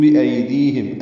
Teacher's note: ہم میں میم ساکن پہ اظہار شفوی ہے